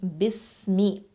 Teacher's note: ஹம்ஸுங்கிற சிஃபத்தை கொடுக்கணும், காற்றை நல்லா வெளியேற்றணும்